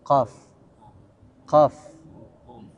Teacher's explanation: Jadi pangkal lidah bertemu dengan langit-langit atas yang mengarah ke kerongkongan, itulah keluar huruf qaf.